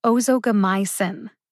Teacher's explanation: The primary emphasis is on my. Emphasize my the most. The secondary emphasis is on o.